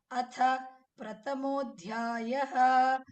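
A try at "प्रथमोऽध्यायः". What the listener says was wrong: Prathamodhyayah. Give a little stress on the Mahapranas.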